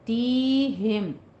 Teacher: मा तीहिम मिर रसूलिन, एक जगह पे या पे आप देखिए हमजा साकिन आ रहा है, थोड़ा सा झटका दीजिए